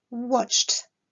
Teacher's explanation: Lorsqu'on est face à un verbe qui se termine par un son sourd, la terminaison ed se prononcera t